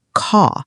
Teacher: British accent tends to soften the R, so car sounds more like caw.